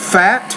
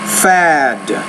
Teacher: that t is a voiceless consonant there's no vibration here so the Val which precedes it is shorter the D is